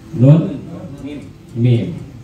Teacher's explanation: al-khayshum, yaitu yang keluar dari rongga hidung.